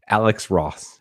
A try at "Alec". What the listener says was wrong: Yeah, it's Alec actually with a C.